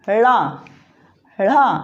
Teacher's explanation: इनका उच्चारण जीभ को तालु की ओर ऊपर मोड़कर फिर बोला जाता है